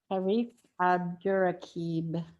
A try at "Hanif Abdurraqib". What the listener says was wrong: It's Hanif with an N.